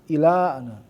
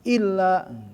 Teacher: ada tasdidnya ada jangan sampai enggak masuk ke tasdid ila illa beda